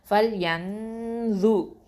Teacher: இஹ்ஃபா பண்ணி ஹெவியாக ஓதணும், தஃப்ஹீமாக ஓதணும்